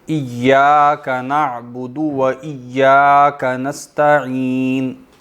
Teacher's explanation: دال لمبا نہیں کریں گے، دال کے بعد واو نہیں ہے، دال جو ہے وہ صرف اس کی حرکت پڑھیں گے